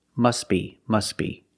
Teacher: you link the words you pronounce it must be must be the t is silent because it's between consonants